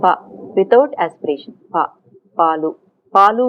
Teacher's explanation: So in voiceless unaspirated plosives, at the time of release the voicing starts. As you can see, the quiggle is put along with the release.